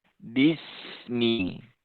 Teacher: ketika membaca sin itu hendaknya tidak terhenti suaranya, tapi sambung dengan ni. Bismi. Jadi bukan bismi, bukan terhenti seperti itu, karena sin itu dia memiliki sifat ketika mengucapkan huruf u, maka suara ini harus tetap berjalan begitu ya.